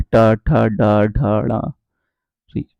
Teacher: जिनके उच्चारण में जो हमारी जीभ होती है वो मुड़कर ऊपर की तरफ लगती है · आपकी जीभ मुड़कर ऊपर की तरफ लगेगी, यानी कि बेलनाकार हो जाएगी जीभ हमारी। ठीक है, और दांतों के ऊपर वाले हिस्से में लगेगी, टा, ठा, डा, ढा, ड़ा, री। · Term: मूर्धा